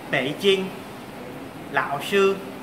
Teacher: Khi thanh ba kết hợp với thanh 1, 2 và 4 thì thanh ba sẽ chỉ còn lại một nửa